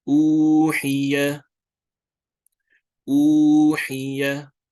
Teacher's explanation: so do lengthen the U for 2 counts